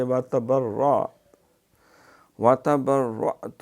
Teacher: جب وقف کریں گے تو پھر تا کی پیش نہیں پڑھیں گے، ساکن پڑھیں گے